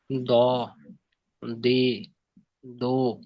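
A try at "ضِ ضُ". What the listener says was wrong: জের এবং পেশে কিন্তু এভাবে উচ্চারণ করলে আহ, তেলাওয়াতের মাঝে জের এবং পেশ দালের সঙ্গে মিলে যাওয়ার একটা সম্ভাবনা থাকে। তো দি, দুই, ব, দুই, দু, ব, দুই, বু, বু, এটা হালকা হয়ে যেন না যায়।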